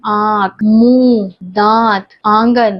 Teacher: जब स्वर मुख और नाक से बोला जाता है तब वह अनुनासिक स्वर कहलाता है